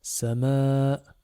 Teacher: On a le alif qui vient allonger notre voyelle a.